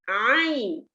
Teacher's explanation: Ain come from the middle of the throat.